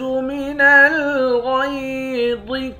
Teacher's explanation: غین اور ضا دونوں کو موٹا پڑھیں گے۔